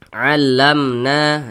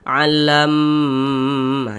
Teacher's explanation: Karena dia izhar dibaca jelas, tak berdengung, baca pendek saja. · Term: izhar syafawi